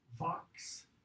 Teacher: The f becomes v, and the s becomes z.